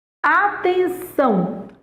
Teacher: Atenção, a sílaba tônica é são.